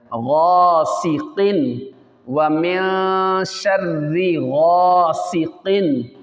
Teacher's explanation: اس کو پر پڑھنا ہے، موٹا پڑھنا ہے، ہیلدی پڑھنا ہے. سین باریک ہے، اس پہ سٹی بھی نکلے گی. اور قاف پھر ہیلدی پڑھے جانے والے ورڈوں میں آ رہا ہے، اس کو پھر موٹا پڑھنا ہے.